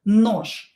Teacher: We have je at the end of the word, and we will pronounce it as sha letter.